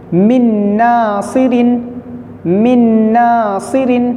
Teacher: دونوں نون نہیں پڑھے جائیں گے بلکہ ایک نون پڑھا جائے گا جس پر تشدید ہے،